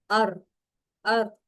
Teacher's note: जबान में एक वाइब्रेशन सी महसूस होती है र को पढ़ते हुए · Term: सिफते तकरीर